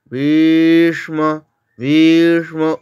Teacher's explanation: ভীষ্মটাকে আমরা দীর্ঘ করব। ভি দীর্ঘস্বর, ভি দীর্ঘ করব, তারপরে মূর্ধন্য স্বরের আঘাত নেব।